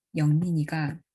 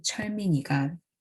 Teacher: 영민이가 is LH, LH and 철민이가 is HH, LH. So that is if the first syllable in the AP starts with a tense or aspirated obstruent, like in 철민이가, the first tone is realized as high.